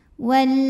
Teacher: yang lebih utama Wal lamnya ini disebut dengan lam mutlak sebab lam sukun menghadapi huruf yang bukan lam bukan ro ya maka lam dibaca jelas · Suaranya tertahan hamzahnya ya, karena hamzah ini dari segi suara sifatnya syiddah, kuat